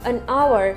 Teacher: Jadi ada kata benda yang ada huruf h-nya di depan, tetapi huruf h tidak terbaca. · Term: silent h